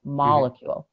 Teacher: the word molecule has the emphasis on that first syllable